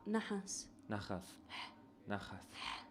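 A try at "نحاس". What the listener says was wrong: It's less in the nose. It's more. It's closer to H. You know.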